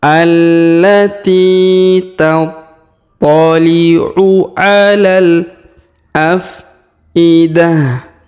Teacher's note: Huruf ta marbutah di ujung kita rubah menjadi ha sukun.